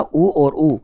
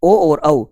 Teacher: अपने ओष्ठ जो है वो पूर्ण रूप से ही गोल होते हैं, और ये ओ और औ जो है इनका जब उच्चारण किया जाता है तो अपने ओष्ठ गोल तो होते हैं लेकिन पूर्ण रूप से नहीं होते हैं